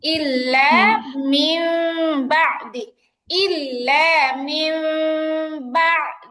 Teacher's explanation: নুন সাকিনের পরে বা আসছে ইকলাবের হরফ তখন নুন সাকিনটাকে মিম দিয়ে পরিবর্তন করে পড়তে হবে এখানে ছোট্ট একটা মিম দেখতে পাচ্ছি ইল্লা মিম বাদি ইল্লা মিম